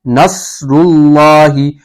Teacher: نصر اللہ, لفظ اللہ کے لام سے پہلے را ہے, را کے اوپر پیش ہے تو لفظ اللہ کے لام سے پہلے اگر پیش ہو تو لفظ اللہ کا لام پر پڑھا جائے گا, یعنی کہ موٹا کر کے پڑھیں گے